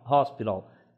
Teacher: eu não falo som de T, porque esse som do T ele é mais próximo do D.